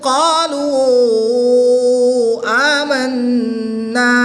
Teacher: قاف کو لام کے ساتھ ملا کے پڑھیں گے، لام کو باریک پڑھیں گے، قاف کو پر یعنی موٹا پڑھیں گے. واؤ مدہ کے بعد حمزہ دوسرے کلمے میں آ رہا ہے تو یہاں پر مد منفصل ہوگی، 2 اڑائی الف تک کھینچ کر پڑھیں گے.